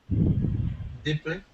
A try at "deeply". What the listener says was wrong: See, not to be too picky, but it sounds to me like you're saying diply. And you want to say E. You want to get that E sound, so it's deeply.